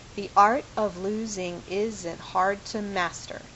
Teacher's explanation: And you can see that it isn't perfect, that not every foot is exactly identical, but the basic pattern we have is this unstressed syllable, then a stressed one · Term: iamb